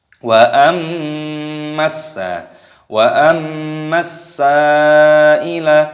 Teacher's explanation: Di sini dibaca berdengung. Di sini ada alif lam samsiyah, ada huruf sin yang berharokat tasydid dimasukkan, diidghamkan. Dengungkan dulu di sini. · sa'ila panjangkan, mad wajib muttasil